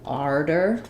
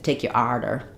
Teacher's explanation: Some places say it a little bit more like arder with an R sound or an ah, arder. Mostly that's New York.